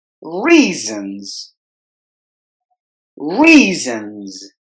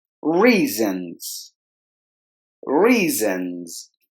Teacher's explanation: both the S's must be given with the Z sound.